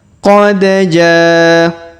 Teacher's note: huruf da berharokat sukun maka kita pantulkan atau kita qalqalahkan. Qad jaa.